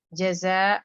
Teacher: آپ کے یہاں زا کے لیے آپ کی ٹپ آف دا ٹنگ نیچے کے دانتوں کے بیک پہ لگ رہی ہے یا دونوں دانتوں کے ملنے کی جگہ پہ لگ رہی ہے، اس لیے اس میں بزنگ ہو جاتی اور یہ ایئر سے یہ آواز سے نکلتی لیٹر. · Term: بزنگ ساؤنڈ